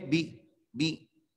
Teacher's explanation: बा पर जो है ना वो जेर है, तो आपने जेर को मारूफ पढ़ना है।